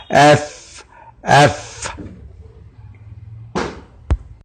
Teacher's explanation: ये सनाए मशरूफा जब नीचे के होंठ के बतन से जाके लगेगा तो वहां से हर्फ फ अदा होगा